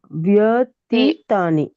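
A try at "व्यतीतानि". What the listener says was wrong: ತೀತಾನಿ ಇದೆಯಾ, ಅಲ್ಲಿ ದೀರ್ಘ ಇದೆ ನೋಡಿ. ವ್ಯತೀತಾನಿ ಎಳಿಬೇಕಲ್ಲ, ತೀ ಎಳಿಬೇಕು.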